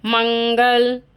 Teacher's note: चलिए, अनुस्वार का मतलब होता है जब हम इसका उच्चारण करते हैं तो इसका उच्चारण नाक से होता है